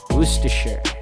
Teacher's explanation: you actually take out the first R sound, as you can see in the word, and you go on straight to the rest of the word until you get to that shire sound at the end, and you replace the I sound with a schwa, and it leaves you with Worcestershire.